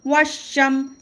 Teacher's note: یہاں پہ حروف شمسی کا قاعدہ ہے. الف اور لام کو ہم نہیں پڑھیں گے، واو کو شین سے ملا کر پڑھیں گے. شین پر تشدید ہے، سختی ہوگی.